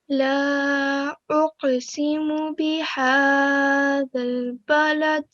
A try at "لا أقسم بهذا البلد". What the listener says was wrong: 2 seconds, okay? So when you read it, make sure you do 2 seconds, okay? It was just a touch longer than it needed to be.